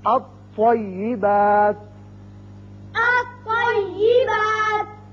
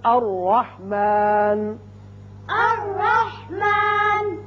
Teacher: اب تھوڑی سی مشق آپ حروف شمسی کی کر لیں کہ جب الف لام کے بعد حروف شمسی میں سے کوئی حرف آئے گا تو وہاں الف لام میں لام نہیں پڑھا جائے گا بلکہ طا مشدد آئے گا